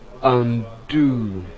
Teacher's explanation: It is a verb, and it is two syllabic word, two syllables, and then the stress fall on the second syllable